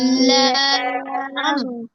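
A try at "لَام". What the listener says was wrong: এটা ঠিক করে উচ্চারণ করবেন, বাংলা লয়ের মতো বললে হবে না।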